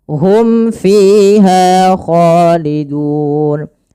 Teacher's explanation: Mim mati bertemu fa. Jelaskan mimnya karena dia izhar fiha kho harus sama karena ketiganya yaitu mad thabi'i.